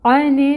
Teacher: زبر کی حرکت کو لمبا نہیں کرنا، لیکن نون مشدد کا جو غنہ ہے وہ 2 کاؤنٹس کرنا ہے